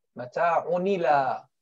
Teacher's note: Move the haraka of the Hamza to the Sakin letter before it, which is the Nun.